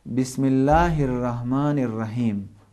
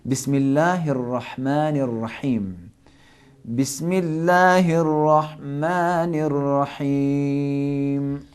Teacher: ہا کے اندر ایک ہی حرف ہے کہ جو اردو سے فرق کرتا ہے، تو اس کو حلق کے درمیان سے نکالنا پڑے گا